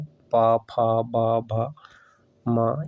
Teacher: ओष्ठ वर्ण में जो है दोनों ओठों के स्पर्श से बोले जाने वाले वर्ण जो है ओष्ठ कहलाते हैं